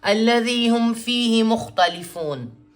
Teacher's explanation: یا مد آیا اور پھر آگے سے آیت بھی آ گئی، تو بڑی مد یا چھوٹی مد کے برابر ہم اسے کھینچ سکتے ہیں